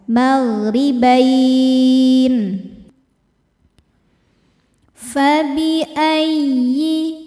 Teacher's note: ya tasydid dibaca dengan naber dengan menaikkan intonasi suara kita